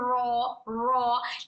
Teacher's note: र हमारे सामने के दोनों दांतों की जड़ को टच करते वक्त में हमारी जबान हल्की सी सामने जबान का छोटा सामने का हिस्सा थोड़ा सा पलट जाएगा। पीठ जबान से आवाज आएगी र।